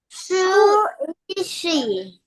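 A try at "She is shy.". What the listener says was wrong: Shy. Shy. Yes, that word, honey, is not she, but shy, okay?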